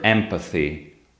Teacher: as in the word empathy, after the letter <m> you have the bilabial plosive [p] so [m] is also bilabial